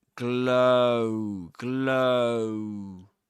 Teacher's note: Yeah. So, and there's a glide in between them, you know, because you go from the O to the oo.